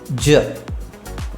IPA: dʒ